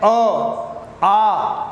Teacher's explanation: आप अनुभव करेंगे कि मुंह खुला हुआ है और हवा सीधी बाहर निकल रही है, कहीं पर भी हवा बीच में रुकती नहीं है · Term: स्वर